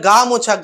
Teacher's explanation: যেমন গামোছা, এই গামোছা শব্দটাকে উচ্চারণ করার সময় আমরা গা এবং মোছা এই দুটো আমরা অক্ষর বা দল পাচ্ছি, তাহলে গা মোছা, গা শব্দের উপর একটা জোর পড়ছে, একেই বলা হয় পস্বর বা শ্বাসাঘাত।